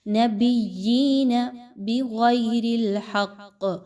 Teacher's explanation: غین اور قاف دونوں موٹے پڑھے جانے والے حروف ہیں، دونوں کو پر پڑھا جائے گا